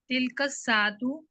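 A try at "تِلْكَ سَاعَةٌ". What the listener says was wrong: साआतुन नहीं है यहाँ पर, साआतुन, तिलकस नहीं है, तिलका साआतुन।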